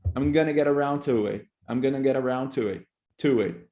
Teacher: You actually pronounce the strong form, to it. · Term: Strong form of to